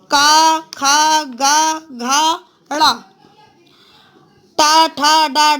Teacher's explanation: इनको बोलते समय मुख के भीतर की हवा रुकावट के साथ बाहर निकलती है। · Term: व्यंजन